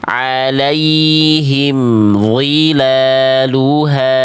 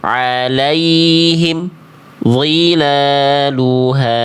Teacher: tidak boleh ada jarak hening antara mim sukun dengan huruf berikutnya. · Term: idhar syafawi